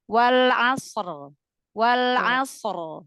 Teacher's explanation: Asr lebih cepat shad sukun ketemu ro-nya disukunkan.